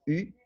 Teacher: Ele é um I com o lábio arredondado, então U, mais ou menos como o U francês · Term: I grego